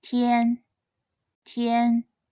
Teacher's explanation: Its pinyin is made up of the initial te and the final yan, te, yan, tian. This character is read in the first tone